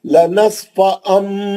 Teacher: जो होठों को सख्ती से पकड़ के गुन्ना कर रहा हूँ, क्लियर मालूम हो रहा मीम का गुन्ना